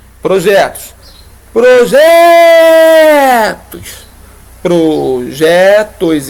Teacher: todas essas três palavras têm em comum a sílaba tônica ser a penúltima. Se é penúltima, paroxítona.